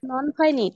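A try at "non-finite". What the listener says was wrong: অনেকে নিট বলে কিন্তু উচ্চারণ হয় ফাইনাইট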